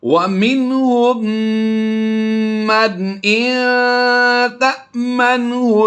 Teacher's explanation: میم ساکن یعنی جزم والے حرف کے بعد پھر تشدید والا حرف آ گیا، ہم نے اس میم کو اس میں مدغم کر دینا ہے